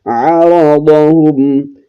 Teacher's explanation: عین کو حلق کے درمیانی حصے سے ادا کرتے ہوئے را اور ضاد کو موٹا کر کے پڑھنا ہے